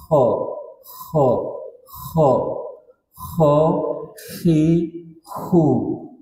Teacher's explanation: Jadi cara dinaikkan lagi sedikit ya. Ho itu kan di tenggorokan bagian atas, naikkan ke atas supaya hilang takrirnya.